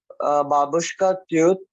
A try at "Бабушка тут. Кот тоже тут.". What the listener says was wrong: Can you make very hard U? Тут. Say again. Тут.